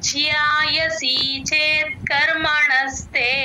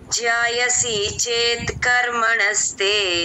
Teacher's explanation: జ్యాయసి చేత్ కర్మణస్తే జ కింద య వత్తు అండి ఆ జాయసి అనకూడదు జియా వినిపించాలి య వత్తు క్లియర్ గా